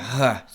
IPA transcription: χ